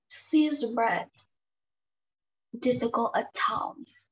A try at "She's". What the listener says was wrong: Đọc lại cho cô âm sờ nặng.